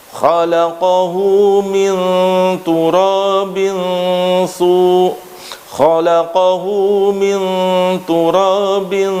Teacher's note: diisti'la'kan, lidah bagian belakang naik